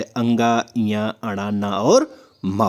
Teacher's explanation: अनुनासिक ध्वनियों का संबंध जो होता है नाक और मुंह दोनों से होता है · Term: अनुनासिक व्यंजन